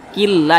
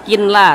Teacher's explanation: maka cara bacanya itu dimasukkan kemudian juga tidak berdengung